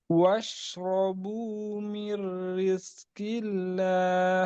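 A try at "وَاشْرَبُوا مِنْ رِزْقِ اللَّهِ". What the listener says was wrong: Rizki tanpa angin. Rizki enggak qalqalah.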